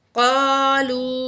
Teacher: वाव के ऊपर बड़ी मद है, तो ये तकरीबन 5 काउंट हम इसको खींच के पढ़ेंगे